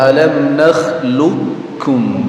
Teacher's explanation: Tapi karena itu pertemuan dan huruf yang berdekatan tempat keluarnya namun sifatnya berbeda, maka qof-nya diidghamkan atau dimasukkan ke huruf kafnya. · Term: idgham mutaqaribain